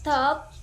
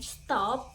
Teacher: Top aspirated t with a puff of air, and stop uninspired t.